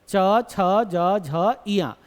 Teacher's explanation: आप देखेंगे कि जीभ जो है वो हल्की सी तालु को क्या कर रही है? टच कर रही है। कर रही है ना?